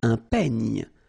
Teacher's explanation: Final E, you don't insist on it. It's ny, the last sound.